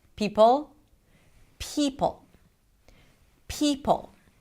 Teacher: the schwa at the end is lengthened